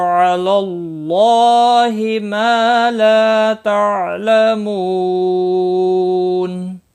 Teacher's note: تعلمو، مو واو مدہ ہے، اس کو بھی ایک الف کے برابر کھینچ کر پڑھیں گے۔ اور وقف کی صورت میں نون ساکن پڑھا جائے گا، وقف بالاسکان ہوگا، مد العارض وقفی ہوگا، 3 سے 5 الف کے برابر کھینچ کر وقف کریں گے